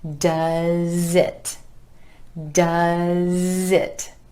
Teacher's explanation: that ending z sound at the end of does jumps on over in front of the I and it so it sounds like zit doesit does it make a make